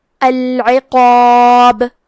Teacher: العقاب، آخری میں حرف البا پہ رکیں گے تو اس پہ جزم سے رکیں گے، تو یہاں با کا حکم ہوگا قلقلہ۔ قلقلہ کا معنی ہے حرف ساکن کو ہلانا، تو ہم حرف البا کو ہلاتے ہوئے یہ کلمہ کو پڑھیں گے۔